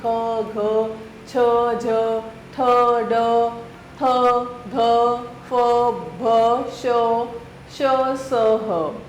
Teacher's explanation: जिन वर्णों के उच्चारण में वायु झटके के साथ बाहर आती है वे महा महाप्राण व्यंजन जिन वर्णों के उच्चारण में वायु झटके से बाहर आती है वे महाप्राण व्यंजन होते हैं और इनके उच्चारण में हकार जैसी ध्वनि विशेष रूप से रहती है।